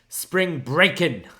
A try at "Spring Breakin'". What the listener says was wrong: Okay, so you said Spring Breakin', like Spring Break-In, but it's actually Spring Breakin' with like an apostrophe. Breakin', like Braun Breaker, breakin'?